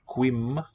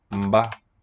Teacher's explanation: And I think this is not quim with an M closing syllable, but mba. Prenasalized stop.